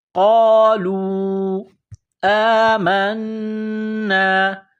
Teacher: کڑا زبر ہے، ایک الف کی لمٹ میں کھینچنا ہے